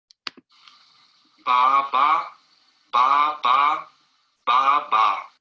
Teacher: so ba is produced at the very front of the mouth. So there's a bilabial sound. The lips are brought together for the b sound.